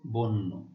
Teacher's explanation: আদ্য অ এর পর জ ফলা থাকলে সেই আদ্য অ এর উচ্চারণ সংবৃত বা ও এর মতো হয়।